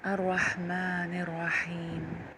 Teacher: یہ ہا درمیان حلق سے ادا ہوتا ہے۔ درمیان حلق سے ادا کرنے کے لیے ہمیں اپنی زبان کا پچھلا حصہ تھوڑا سا پیچھے حلق میں پش کرنا پڑتا ہے، دھکیلنا پڑتا ہے، ٹھیک ہے؟